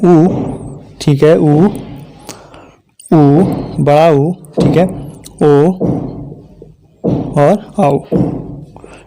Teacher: इनको बोलने पर जो हमारा ओष्ठ है इसका आकार कैसा हो जाता है? वृत्ताकार हो जाता है।